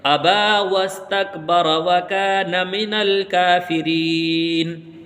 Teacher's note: را کے اوپر زبر لگا کر ملا کے پڑھ دیں گے